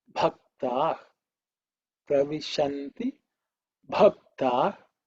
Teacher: fourth pa, bha, with an extra air